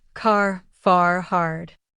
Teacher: in American English, we often pronounce the R clearly at the end of words. While in British English, it may be softer or even silent. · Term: clear R sound